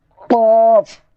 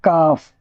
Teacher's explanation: اور یہ چھوٹا کاف ہے، اس کو اس طریقے سے بولیں گے کاف۔ بڑا قاف یہ ہے، اس کو حلق سے نکالیں گے قاف، اور اس کو بولیں گے کاف